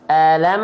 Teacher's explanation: Jelaskan bunyi mim sukun dari bibir, izharkan mim dari syafatain atau syafawi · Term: izhar syafawi